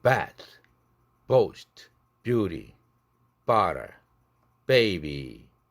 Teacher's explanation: 강세가 있는 모음 앞에서 부드그가 강하게 파열되는 거죠. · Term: strongly exploded